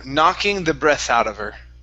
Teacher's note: Now, what you want to do with with um the H on her. Okay, drop the H out of her.